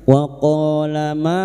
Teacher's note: qof fathah dikuti alif dua harakat kita panjangkan mad th'i waq ma ma fathah diikuti alif dua harakat mad th'i naha